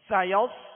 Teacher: صاد کو پر پڑھیں گے، ہونٹ گول نہ ہو اور سیٹی کی آواز پیدا ہو